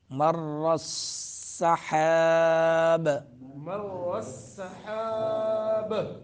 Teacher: قلقلہ ہوگا، اور را کو پر پڑھیں گے، سین میں سیٹی نکالیں گے اور ہا کو درمیان حلق سے ادا کریں گے